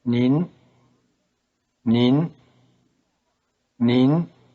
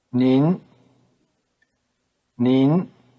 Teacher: notice that Ning is in the rising tone